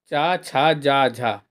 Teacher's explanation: चा छा जा झा तालव्य व्यंजन है